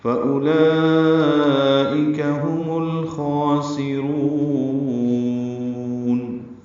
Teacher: سین صفیر کی آواز سے ادا کریں گے، را پر پڑھیں گے، را کو لمبا کریں گے.